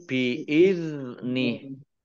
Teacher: zal sukun bukan kolkolah, ya, jangan dipantulkan. Biizni, ini haknya karena wakof menjadi sukun sehingga dibaca biizni, ya, pendek karena tidak ada tanda panjangnya.